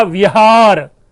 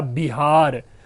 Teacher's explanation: जो हमारा जो दंत्योष्ठ वर्ण है वो जाकर के ओष्ठ वर्ण ब बन जाता है वीर। शब्द था विहार, बौद्ध विहार जानते होंगे, बन गया बिहार।